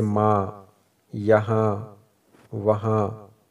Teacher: جب نون ناک سے پڑھا جائے تو اسے کہتے ہیں نون غنہ